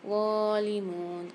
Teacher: ظالمون, غان کے اوپر کھڑا زبر ایک الف کی مقدار کھینچیں گے. میم کے ساتھ واو ساکن ہے, یہاں پر بھی ایک الف کی مقدار کھینچ کے پڑھیں گے.